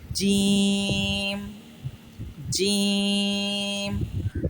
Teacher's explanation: ہمارا مخرج زبان کا درمیان جب اوپر کے تالو سے لگتا ہے تو جیم ادا ہوتا ہے